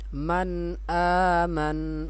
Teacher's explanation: نون ساکن اور یا تنوین کی آواز کو غنّے کیے بغیر جلدی پڑھیں گے